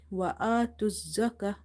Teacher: this ta marbuta will become ha because we have to do waqf here, pausing here.